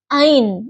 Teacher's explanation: huruf ain makhrajnya ditenggorokan bawah dinding tenggorokan